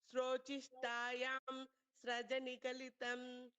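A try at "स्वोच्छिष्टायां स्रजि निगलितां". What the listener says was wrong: Sraji, no, it's not Sraja. Swochishtayam Srajinigalitam.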